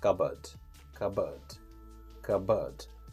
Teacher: In American pronunciation, we say cupboard. And in British pronunciation, you can drop R and you can say cupboard.